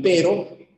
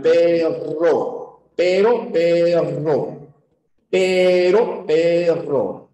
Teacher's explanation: Hay una vibrante simple, choca una sola vez con el paladar y luego regresa.